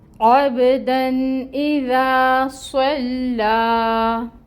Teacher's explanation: با پہ قلقلہ ہوگا، حروف قلقلہ میں سے ہیں، آواز باؤنس ہوگی، پلٹے گی۔ · عین وسط حلق سے نکلے گی آواز اور فتحہ کی حرکت ہے، 1 کاؤنٹ پڑھیں گے۔